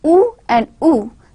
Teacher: Oo and oo, these two sounds, long oo and oo, these are the two sounds which are produced by raising the back part of your tongue higher than the normal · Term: back vowels